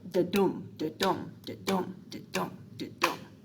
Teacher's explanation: And so in iambic pentameter, you have an unstressed right here, the first unstressed, and the second is a stressed syllable.